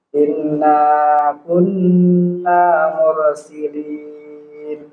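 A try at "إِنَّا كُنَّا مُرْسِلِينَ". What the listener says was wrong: Iya, jadi nun bertasdid harus ditempo ya. Terus huruf ro didahului dhammah dia tebal. Mursilin. Mur. Jangan bergetar terlalu banyak. Mur.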